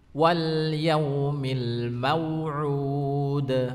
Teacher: Di akhir ayat ada huruf dal, itu sifatnya adalah memantul. Jadi ud, ada pantulannya ya.